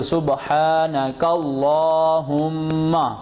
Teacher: سبحانک اللہم، کاف کو لام سے ملایا، یہ بھی اللہ کا لام ہے، تو سبحانک اللہم۔ میم کے اوپر گنہ ہوگا، میم مشدد اور نون مشدد میں ہمیشہ گنہ ہوتا ہے، ناک میں